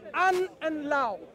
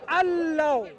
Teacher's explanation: In the reading, when we read, you would read Allah. The noon disappears. The noon is assimilated.